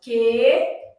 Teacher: esse U não é pronunciado